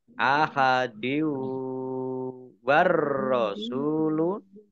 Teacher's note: Kasroh tanwin bertemu dengan huruf wawu, bacaan idgham bi gunnah, masuk dengan mendengung, yaitu mendengung wawu, ditahan 2 harokat.